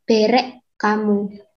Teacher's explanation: Baik bunyi NG pada kata bereng maupun H pada kata hamu, keduanya berubah menjadi bunyi K, sehingga konstruksi bereng hamu itu diucapkan berek kamu. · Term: asimilasi